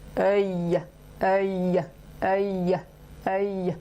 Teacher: c'est l'arrière de la langue qui vient se plaquer en haut pour faire ce son y.